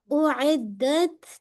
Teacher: اعدت عین میڈل of حلق سے